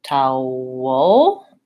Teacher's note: First, I have a dark L there.